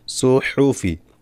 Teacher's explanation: সদ মোটা হা গলা থেকে